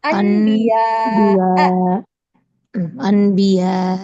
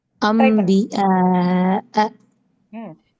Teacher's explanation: இடத்துல நூன் அல்லது தன்வினை தொடர்ந்து ப வந்துச்சுன்னா அந்த சட்டம் இக்லாபினுடைய சட்டம் அப்போ நீங்க நூன தான் மாத்தி நூனுக்கு பதில் மீமா வந்து மாத்தி ஓதணும்